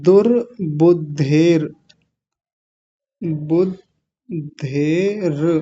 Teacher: ये र पर जाकर रुकेंगे, र आधा है